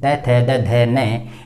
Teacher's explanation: इनको हम उच्चारण करते हैं तो हमारी जीवा कहीं न कहीं हमारे दांतों से स्पर्श करते हुए बाहर ध्वनि को निकालती है